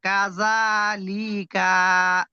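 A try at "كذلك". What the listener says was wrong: কা টান দিলেন কেন? কা টান আছে, শুধুমাত্র জাল টান হবে কাযালিকা।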